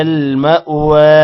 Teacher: میم کے بعد حمزہ ہے تھوڑا سا جھڑکا دینا ہے یہاں پر اور وا کو لمبا کرنا ہے